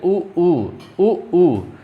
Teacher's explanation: ओंठों की सहायता से बोले जा रहे हैं। जैसे ही आप इन्हें बोल रहे हैं आपके होंठ जो हैं गोल हो जा रहे हैं, इसीलिए ये कहलाते हैं ओष्ठ।